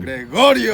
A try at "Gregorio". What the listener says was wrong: Gregorio, but you have to roll your tongue.